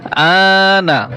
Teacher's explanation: এখানে হামজা খারা জবর মদের হরকত রয়েছে, আমরা এক আলিফ টান দিয়ে পড়বো